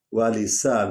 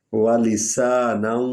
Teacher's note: سین کو سیٹی کی آواز نکلے گی